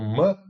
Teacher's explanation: o Mã ele é mais soante porque ele é uma nasal